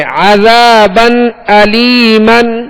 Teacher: عذابا علیما، با پر 2 زبر ہے، 2 زبر کی تنوین ہے. تنوین کے بعد حمزہ حروف حلقی میں سے آ رہا ہے، لہذا یہاں پر اظہار کریں گے